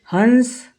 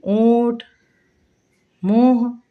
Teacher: नाक और मुंह दोनों से हवा निकल रही। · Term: चंद्र बिंदु